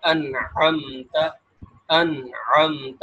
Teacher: نون کا اظہار ہو رہا ہے، ہم نون کو نہ اخفا کر رہے ہیں، نہ ادغام کر رہے ہیں، نہ غنہ کر رہے ہیں